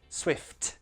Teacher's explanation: So with names like Taylor Swift, the T in Swift, don't make that one glottal. That will always be true T.